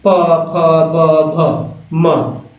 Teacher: दोनों होंठ आपका टच कर रहा है, हवा नहीं कर रहा है। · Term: पवर्ग